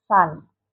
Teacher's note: Alveolar fricative, the tip of the tongue is near the alveolar ridge. Air flows through a narrow space between the tongue and the alveolar ridge.